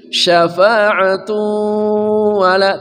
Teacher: tanwin bertemu waw namanya idgham bi gunnah